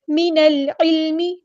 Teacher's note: من العلم، نون کو ہم نے لام کے ساتھ ملا دینا ہے، حمزۃ الوصل لام ڈراپ ہو جائے گا، لام یہاں پہ لام قمریہ ہے، اس کو ہم ظاہر کریں گے